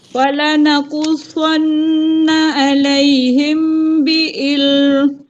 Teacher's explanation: mim mati bertemu ba dengung ولنقصن عليهم بعلم.